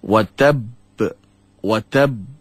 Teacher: Qalqalah ini adalah Qalqalah Akbar kerana adanya sabdu yang menyebabkan huruf itu berat watab watab dia menjadi lambat itu kerana apa kerana ada dua